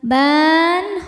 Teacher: Maka bnya panjang boleh dua, boleh empat atau enam harakat asal konsisten dalam satu kali duduk. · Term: mad arid lukun